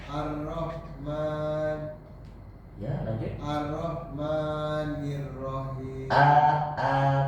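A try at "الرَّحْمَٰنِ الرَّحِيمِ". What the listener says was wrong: Tasydid dengan ro. Ar-Roh bukan Ar-Rahman. Ar-Rahman. Nir-Rahim.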